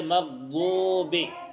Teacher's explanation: واو مدہ کو ایک الف کے برابر کھینچ کر پڑھا جاتا ہے، تو اس کو کھینچیں گے، جیسے مغضوبی.